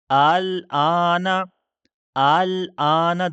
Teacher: دوسرا حمزہ ہم جو ہے وہ نرمی کے ساتھ ادا کر رہے ہیں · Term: تسہیل